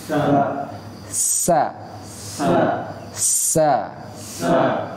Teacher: Sa, karena dia punya sifat, dan desisannya deras, suaranya keras karena huruf tersebut memiliki sifat sofir, sehingga udaranya keluar dari celah-celah gigi seri atas dan bawah.